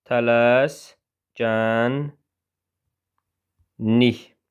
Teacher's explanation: K G-yə keçdi. L N-ə keçdi.